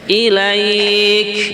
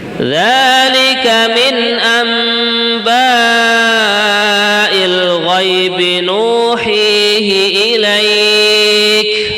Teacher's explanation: sifatnya kaf, itu hamas kita tunaikan ilaik. Nah, ada nafas yang keluar ya.